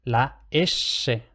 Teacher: la S típica castellana, o sea, la apicoalveolar con la punta de la lengua contra los alveolos · Y creo que el otro factor, quizá de hecho el predominante, es la S típica castellana, o sea, la apicoalveolar con la punta de la lengua contra los alvéolos, la S. Esta S es acústicamente intermedia entre la S más general en las lenguas y el primer sonido de shu.